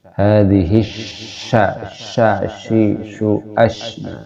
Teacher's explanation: ini disifati hams ya mengalirnya nafas ketika menyebutkan huruf sya